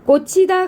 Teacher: 즈와 흐가 만나서 츠가 됐어요. 거센 소리가 일어났죠.